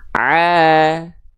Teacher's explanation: fathah tegak seperti ini maka ainnya dibaca dengan vokal a karena huruf berharakat fathah itu dia mesti dibaca dengan vokal A tapi kadar panjangnya dua harakat